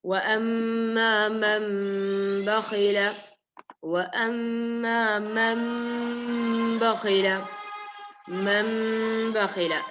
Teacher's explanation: And what we do in iqlab is when a noon sukoon is followed or a tanween is followed by ba, you have to remove the noon and pronounce it as gunna. You have to remove the noon and pronounce it as meme with gunna. So it's not meme mushaddada.